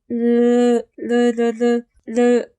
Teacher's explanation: 리을을 발음해보면 공기가 양옆으로 흘러나오는 걸 느낄 수 있을 겁니다. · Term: 유음